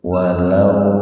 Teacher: mad lain atau haraf lin waw mati didahului oleh fathah. Nah, ini dibaca agak panjang gitu